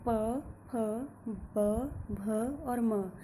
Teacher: इन व्यंजनों का उच्चारण करते समय दोनों होठ एक दूसरे से सट जाते हैं, एक दूसरे से स्पर्श करते हैं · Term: ओष्ठ्य व्यंजन